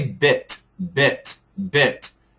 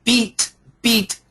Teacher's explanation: this is a short I when we say bit bit bit the sound goes down bit bit so imagine sending the sound down bit bit but when we say beat beat the sound goes out and a little bit up